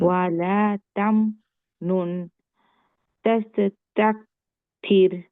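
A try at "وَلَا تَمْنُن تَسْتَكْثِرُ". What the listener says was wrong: তাসও না, তাস। ক্লিয়ার তাস। এটা কলকলা বানানো যাবে না।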